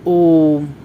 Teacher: और प्लुत जैसे ओ, माने अर्थात इसमें 3 गुना समय लग रहा है। 3 गुना समय लगने का इसे प्लुत स्वर कहते हैं।